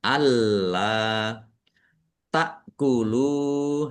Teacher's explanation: hamzah sukun ya tak kulu dibaca ringan jangan keliru ain atau kaf